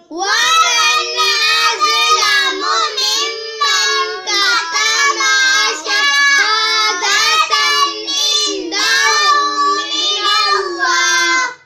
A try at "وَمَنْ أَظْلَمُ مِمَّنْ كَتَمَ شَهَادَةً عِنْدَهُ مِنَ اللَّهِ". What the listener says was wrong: كتم ما کو لمبا نہیں کرنا. ومن أظلم ممن كتم شهادة عنده من الله